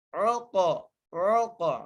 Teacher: عین کو قاف سے ملانا ہے، قاف پر قلقلہ کرنا ہے